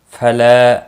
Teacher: فلا الف مدہ ہے 1 الف کے برابر کھینچ کر پڑھیں گے